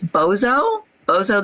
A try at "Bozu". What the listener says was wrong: Yeah, it's pronounced Bozu, I believe. I had to do it a bunch of times to get it right, because in my head I always want to pronounce it Bozo, like the clown, but no.